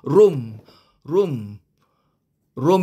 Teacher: Room room ini kena dua harakat dengungnya dua harakat drag sikit supaya dia sampai kepada dua harakat